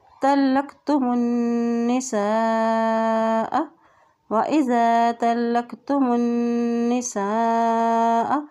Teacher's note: تو زبر لام تل لام زا قاف لک تلق تا پیش تو تلقتم تلقتم میم کی پیش کو نون کے ساتھ ملائیں گے کیونکہ نون کے پر شد ہے. اور جب نون کے پر شد آتی ہے تو وہاں پر غنہ بھی ادا کیا جاتا ہے